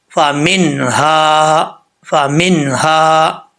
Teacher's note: اظہار کر کے، ظاہر کر کے، فامنہا، فامنہا۔ یہ ہا جو ہے بھاری ساؤنڈ کے ساتھ آئے گا، اس کا تعلق سینے کی طرف ہے